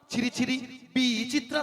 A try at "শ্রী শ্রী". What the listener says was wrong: আরে মাসি, ওনার নাম ছিরি ছিরি নয়, বলো শ্রী শ্রী। বলো শ্রী শ্রী।